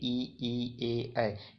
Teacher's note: अग्रस्वर में आते हैं, मतलब जीवा के आगे वाला हिस्सा जो है इसमें उपयोग आ रहा है